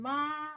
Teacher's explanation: So these blue lines shows pitch, which is the height of your note, of the tone. So the first one, ma, you have a flat line.